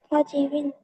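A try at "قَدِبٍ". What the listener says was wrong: হ্যাঁ, আমি যতটুকু শুনতে পাচ্ছি তোমার দালের উচ্চারণটা নরম হচ্ছে না, তাহলে নরম করার চেষ্টা করতে হবে।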